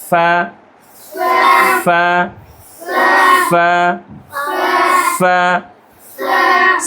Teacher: ফা হরফের মাখরাজ হচ্ছে দাঁতের আগা, ঠোঁটের পেট।